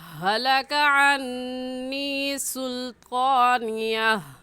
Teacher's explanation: مخارج کا خیال رکھ کر پڑھیں گے، یہ ہا حلق کا آخری جو سینے کی طرف ہے اس سے نکلتی ہے